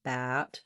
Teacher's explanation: A is sliding and tense, gate versus get, These types of contrasts can be helpful, as well as doing contrasts, for example, between bat, more open, front of the tongue down, back of the tongue lifted,